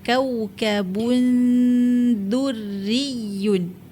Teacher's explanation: ba merupakan huruf yang keluar daripada dua bibir. Tanwin baris depan kena muncung.